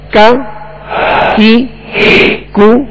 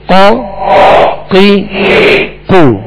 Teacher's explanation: کاف کو جو ڈنڈی والا کاف ہوتا ہے اس کو باریک پڑھیں گے، اور قاف جو دو نقطے والا اس کو پور پڑھیں گے، موٹا پڑھیں گے. یہ ان میں فرق ہے.